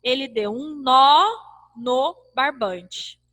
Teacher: esse nó acentuado, eu li bem mais forte do que esse no não acentuado.